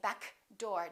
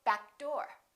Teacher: say uh back door we're not going to say back door don't release that k